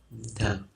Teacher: th sound, really your tongue placement has a big part to do with it. So if you put your tongue in between your teeth, and just practice that initial sound, and you should feel sort of a buzzing feeling on your tongue, like it sort of vibrates a little.